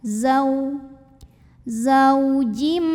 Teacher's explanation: karena ada wau sukun yang didahului baris fathah maka dibacanya cukup kita lembutkan saja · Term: huruf Lin